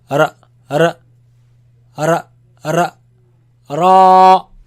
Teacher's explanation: it comes from the tip of the tongue touching the front palate roof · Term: heavy